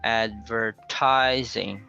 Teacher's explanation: So the stress there is on the third syllable.